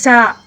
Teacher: آئین کو حلق کے درمیانی حصے سے ادا کریں گے اور زا کی سیٹی نکالیں گے، زا. سندع الزبانیہ.